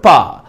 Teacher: Pa is a voiceless sound. Voiceless. It is bilabial. It is a bilabial sound. It is a plosive sound. Okay. So voiceless, bilabial, plosive.